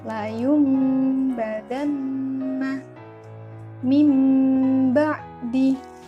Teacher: di situ kan ada huruf nun mati bertemu dengan ba, maka dibaca mim. Biasanya di dalam Al-Quran itu ada tanda huruf mim kecil di atas nun mati itu. · Sedangkan menurut istilah adalah apabila ada nun mati atau tanwin yang bertemu dengan huruf ba, maka cara membacanya adalah dibalikkan ke huruf mim. Jadi nun mati atau tanwin itu dirubah ke huruf mim · Dengan berdengung, bacanya dengan berdengung. Berdengung berapa harokat? 2 harokat. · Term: iqlab